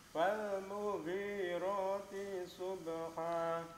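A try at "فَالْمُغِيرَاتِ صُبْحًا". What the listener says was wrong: T-nya masih kepanjangan sedikit. Mughirati subati langsung menuju ke huruf shad.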